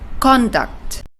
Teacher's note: Conduct, with the stress in the first syllable, means behavior.